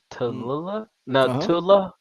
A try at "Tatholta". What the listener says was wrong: Tatholta. You missed a T, bro. It's got to be